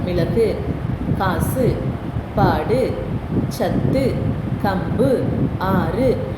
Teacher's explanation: ஆனால் இது சொல்லுக்கு இறுதியில் வரும் பொழுது பிற எழுத்துக்களோடு சேர்ந்து சொல்லுக்கு இறுதியில் வரும் பொழுது தனக்குரிய ஒரு மாத்திரை அளவிலிருந்து குறைந்து அரை மாத்திரையாக ஒலிக்கிறது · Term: குற்றியல் உகரம்